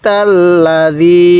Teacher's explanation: তাহলে আর আই তাল লা, দালিয়াদের রি, এগুলোর মধ্যে এক আলিফ টান দিব, কারণ জেরের পরে ইয়া সাকিন এক আলিফ টানতে হবে